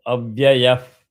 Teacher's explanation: visarga will get substituted by half of pa.